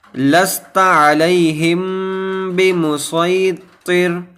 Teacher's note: اب یہاں پر میم ساکن کے بعد با آیا ہے تو یہاں پر اخفائے شفوی کا قاعدہ ہوگا کہ میم ساکن کے بعد اگر با آ جائے تو وہاں پر اخفائے شفوی کا قاعدہ ہوتا ہے، یعنی ہم کو وہاں گننا کر کے پڑھنا رہتا ہے